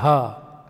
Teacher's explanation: ಹ ಅನ್ನೋ ವ್ಯಂಜನವೂ ಸಹಿತ ಕಂಠದಲ್ಲೇ ಹುಟ್ಟುತ್ತೆ. ಹ ನೋಡಿ ಇಲ್ಲಿ ಹುಟ್ಟುತ್ತೆ.